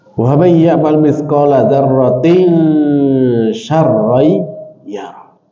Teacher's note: Dibaca dengan ikhfa, samar. Dan di situ ada ghunna.